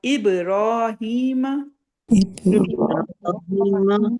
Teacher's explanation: با کے اوپر سکون ہے تو ہم نے اس کو باؤنس کرنی ہے آواز